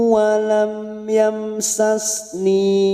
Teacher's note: mim sukun dibaca jelas, namanya bacaan idhar safawi. Walam yamsas, ada mim sukun lagi bertemu si, namanya idhar safawi.